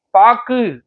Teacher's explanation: சொல்லின் இறுதியில் வரும்பொழுது ஒரு மாத்திரைக்கு பதிலாக அரை மாத்திரை அளவே ஒலிக்கிறது. பாக்கு, இதுல கூவை விட ஊ சவுண்ட் அதிகமா இருக்கும்.